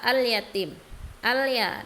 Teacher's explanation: Dia alif lamnya dibaca jelas, berbeda dengan syamsiyah. Kalau syamsiyah tadi tidak dibaca, langsung masuk ke huruf setelahnya. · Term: alif lam qamariyah